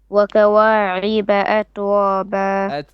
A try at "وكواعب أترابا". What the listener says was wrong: أترابا. Not at, that's قلقلة. at. وكواعب أترابا.